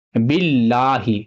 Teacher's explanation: لام کے اوپر تشدید ہے اور تشدید کو 2 مرتبہ پڑھا جاتا ہے۔ یہ والا الف اور یہ لام نہیں پڑھا جائے گا کیونکہ اس کے اوپر زبر زیر پیش کچھ بھی نہیں ہے، تو لام کو 2 مرتبہ پڑھنا ہے، با اس لام میں ملے گا اور لام کو 2 مرتبہ پڑھنا ہے، جیسے باللہ، ٹھیک ہے۔